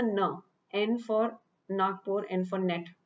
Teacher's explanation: in na we just turn our tongue slightly upwards so that it touches our soft palate